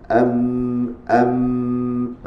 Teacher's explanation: huruf yang mempunyai sifat gunah yang asliah yang mana tidak dapat dipisahkan iaitu bunyi Gema iaitu pada rongga hidung